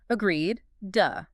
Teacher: It ends with a definitive D sound. You cannot swallow that D. It has to be there to mark the word as complete. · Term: voiced stop